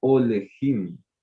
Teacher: Es una vocal larga, por eso la sheva va a sonar como una E.